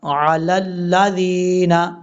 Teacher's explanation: اس کے بعد ہے علی الذین یبدلونہ، عین زبر ع، لام لام زبر لل، لام زبر لا، علی اللہ، ذال یا زیر ذی، نون زبر نا، علی الذین، لام کو جب لام سے ملائیں گے تو بیچ میں یا اور الف کو چھوڑ دیں گے